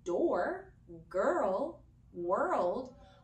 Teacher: all of those sounds have an R that is pushed together with a vowel sound. And what that creates is a need for co-articulation and for our tongue to move kind of rapidly around in our mouth.